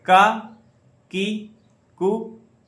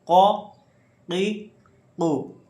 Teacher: یہ بڑا کاف قو, اس کو ہم تھوڑا حلق سے نکالتے ہیں زور دے کے. ہا, ہی, ہو, ہا, ہی, ہو.